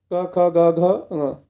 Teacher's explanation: क वर्ग क ख ग घ तो ये सब कंठ से बोले जाते हैं